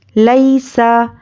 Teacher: یوں قاف زبر قا یوں قا لام زیر لی یوں قالی با پیش بو یوں قالی بو لام یا زبر لئی سین زبر سا لئی سا. تو یا پر جزم اور اس کے پہلے زبر یا لین، اس کو ہم نرمی سے جلد ادا کریں گے